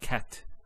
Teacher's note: a stop on the letter T so we say cat so the T doesn't have any vowel associated with it it's actually just a stop on the T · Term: sukoon